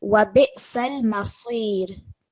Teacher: Can you hear the thickness in the sad?